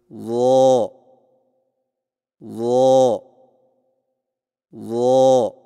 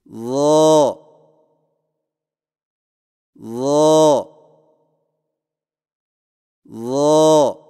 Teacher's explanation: زبان کی نوک کو سامنے والے اوپر کے دو دانتوں کے اندرونی کناروں سے نرمی سے لگا کر اور زبان کے پچھلے حصے کو تالو کی طرف بلند کرتے ہوئے موٹی آواز میں پڑھیں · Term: ظا